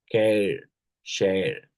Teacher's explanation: starts with a closed mid-front unrounded vowel sound like a, and glides to a central vowel sounds like air.